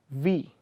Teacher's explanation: Labiodentals is, say for example, you are using the lower lip and touching it to the upper teeth. Say for example, V.